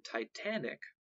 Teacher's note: root the root titan has stress on the first syllable however when the suffix ic or ick is added the stress shifts to the second syllable as in titanic